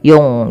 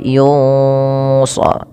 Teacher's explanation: nun matinya ketebal ya, kita tebalkan karena dia bertemu dengan huruf shad, yang dimana shad ada huruf isti'la, istilah yang itu terangkatnya pangkal lidah, dan dia juga idbaq.